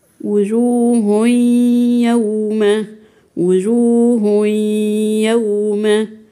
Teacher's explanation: نطقتش تنوين ليه لان ده اسمه ادغام يعني ما تنطقيش تنوين دخلي التنوين في حرف الياء وهاتي الغنه في حرف الياء